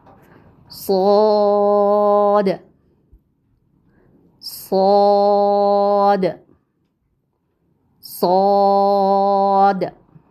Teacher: स्वाद स्वाद सद जी बिल्कुल वैसे ही मखरज है इसका जैसा का सीन का था यानी जुबान की नोक सनाए सुफला यानी नीचे के दोनों दांतों के किनारों से मजबूती से लगाकर अदा करते हैं। · स्द को जब हम अदा करते हैं तो आप देखिए इसमें आवाज कैसी आ रही है? सीटी वाली आवाज है। जैसे बिल्कुल सीन की थी।